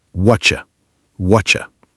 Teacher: The T in what and the U in you squish together to make a ch sound, and the word are basically disappears.